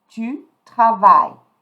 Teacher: So je travaille. Tu, I'm not going to pronounce the E, I'm not going to pronounce the S.